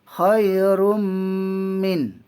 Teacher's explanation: idgham ma'al gunnah, dengung dengan dua harakat